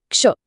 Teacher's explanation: तो हम दो बेसिक व्यंजनों से शुरुआत करते हैं। एक है क की आधी आवाज और दूसरी है श की पूरी आवाज। और जब ये दोनों मिल जाते हैं तो एक बिल्कुल नया वर्ण और एक नई आवाज बन जाती है, क्ष। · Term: संयुक्त व्यंजन